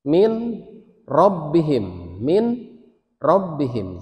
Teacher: si nunnya jangan dibaca, masuk ke ro, tapi jangan ditahan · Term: bila gunnah